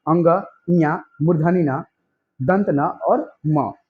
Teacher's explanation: उच्चारण में वायु नाक से निकलती है, इसलिए इसे नासिकीय या फिर अनुनासिक व्यंजन भी कहा जाता है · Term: नासिक्य व्यंजन